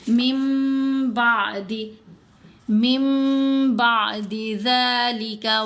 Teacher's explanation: اب ہم نے نون نہیں پڑھنا، من نہیں پڑھنا، نون کے اوپر آپ کو یہ چھوٹا سا میم نظر آ رہا ہے، میم کو میم سے ملائیں گے اور غنہ بھی کریں گے